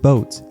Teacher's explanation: the pure o sound is also stuck to other vowels like in the word boat here it's stuck with the u sound